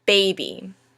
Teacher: Now baby has two syllables. First a stressed and then an unstressed syllable. We pronounce it baby, not baby.